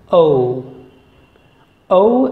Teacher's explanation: it's a diphthong it's a combination of two vowel sounds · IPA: /əʊ/